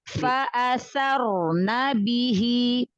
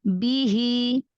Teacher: huruf ba dan jim itu salah satu yang harus diperhatikan, memberikan sifat syiddah dan jaharnya pada huruf ba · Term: syiddah jaharnya